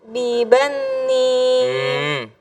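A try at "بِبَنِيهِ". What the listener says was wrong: Kok bibani? Nunnya ada tasdidnya nggak? Kenapa ditasdidin? Kok nempel bibani? Jangan nempel dong. Ya kan, kalau bibani berarti ada tasdid di nunnya ya.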